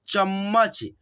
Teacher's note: और आपसे यहाँ पे एक बात बता दूं दोस्तों, यहाँ पे देखिएगा दोस्तों, जो यहाँ पे च है और म संयुक्त है, तो इसमें देखिएगा ये जो आधा म है ना, इसका साउंड आपको थोड़ा स्लोली सुनाई देगा, यानी कि दोस्तों नाम मात्र में सुनाई देगा दोस्तों।